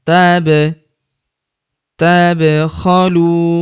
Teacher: huruf ba berharakat sukun kita pantulkan atau kita qolqolahkan